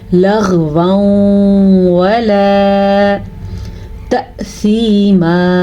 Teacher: حمزہ کے اوپر ساکن ہے تو حمزہ جھٹکے کے ساتھ پڑھا جائے گا · لغوا ولا، لیں جی ہمارے پاس دوبارہ سے ادغام کا قاعدہ آ گیا کیونکہ نون تنوین کے بعد یا میم واو نون میں سے واو آیا ہوا ہے، تو یہاں پہ ادغام ہوگا اور غنّے کے ساتھ ہوگا، غنّہ کرنا ضروری ہے